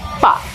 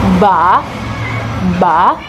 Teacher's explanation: Actually, the manual way to know or to test the voicing quality is you can place your finger over the voice box, like this. If you say pa, you shouldn't feel the vibration. That's why we call it voiceless. And if we want to say ba, you can feel the vibration. That's why it's called voiced sound.